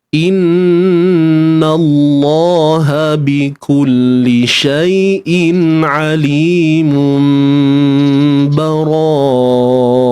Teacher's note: iqlab ni kita tahu ia perlu dibunyikan dengan kita menutup bibir secara bersahaja. Kan, tutup bibir, cuma kita melemahkan pegangan antara dua bibir lah.